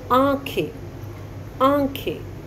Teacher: जब बोलोगे जो हवा है वह नाक और मुंह दोनों से निकलती है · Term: अनुनासिक